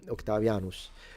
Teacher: Octavianos with the s retracted